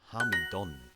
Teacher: in East Perthshire Gaelic, the final A often gets dropped, so it'd be Hamidon.